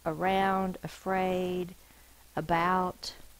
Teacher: A schwa is used for unaccented syllables, usually at the beginning of the word, like around, afraid, about.